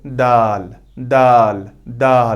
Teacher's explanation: जबान की नोक और सनाया उलिया की जड़